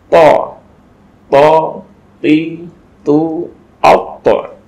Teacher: To ini ujung lidah menyentuh kepada pangkal gigi seri bagian atas.